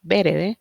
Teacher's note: la sílaba que va después de la tónica y la vocal en específico va a perder bastante su sonido